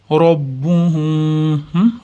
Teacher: Robbuhumda manovi sukunli mim b harfiga uliqqanda ixfo shafaviya bo'ladi.